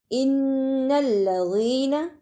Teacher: دونوں شد کو صحیح ادا کرنا اور زال کو یاد سے ملانا ہے، اس لیے اس پہ تھوڑی سی دیر لگانی ہے، نون پر زبر، اسے جلدی پڑھنا ہے۔